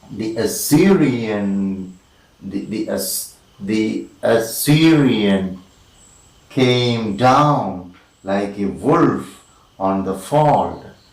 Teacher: two unstressed followed by one stressed is an anapaest